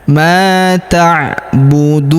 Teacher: Huruf ma kita panjangkan 2 harokat karena terdapat alif di depannya.